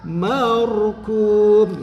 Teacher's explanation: Nah ini ro sukun setelah patah ini dibaca tafhim.